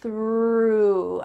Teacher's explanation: Make sure you have a nice TH. Your tongue is between your teeth and there's a stream of air coming out.